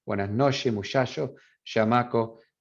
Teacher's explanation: the allophone that is most common in the region in Chihuahua and Sonora is the sh sound.